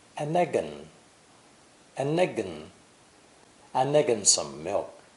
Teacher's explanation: and is nearly always quickly pronounced with no D sound, the same as the indefinite article, an.